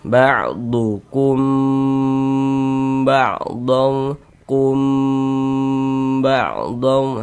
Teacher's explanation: Eah, hukumnya berarti ikhfa syafawi. Maka kita dengungkan di bagian kumnya itu kita tahan, kita panjangkan sejenak kira-kira sepanjang dua harakat.